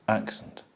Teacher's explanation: in all nouns of 2 or more syllables, normally the last syllable changes from the original vowel to the, Schwa. and the schwa does not take the stress. So you know the stress is on the first one, accent.